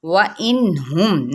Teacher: نون پہ ظاہر کریں گے کیونکہ آگے حروف حلقی میں سے ہے یہ ہا · میم پہ ظاہر کر دیں گے میم کی آواز کو، یعنی اظہار شفوی